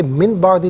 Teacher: نون ساکن کے بعد با ہے تو نون ساکن کو میم سے چینج کر کے میم کی آواز کو غننے کے ساتھ ادا کریں گے